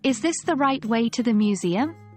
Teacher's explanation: stress right and Museum use Rising intonation at the end